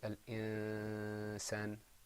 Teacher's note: Did you notice there wasn't a noon sound? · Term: ikhfa